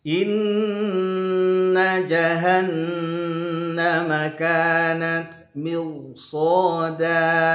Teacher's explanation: di sini inna ada gunnah, nun bertasydid, lalu kemudian ada nun bertasydid lagi.